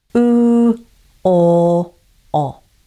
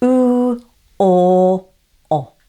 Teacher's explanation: my jaw moved from a more closed position to a more open one, and my lips became less rounded as my jaw opened. But my tongue stayed the same. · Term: back vowels